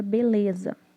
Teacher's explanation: O B e o ZA têm intensidade alta. Então, a sílaba de menor intensidade é o LE de beleza. Se você pronunciar aí na tua casa a palavra beleza, você vai ver que o LE de beleza é com menos intensidade. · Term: sílaba átona